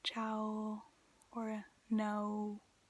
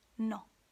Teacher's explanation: english speakers tend to elongate the vowels at the end of the words whereas italians don't do that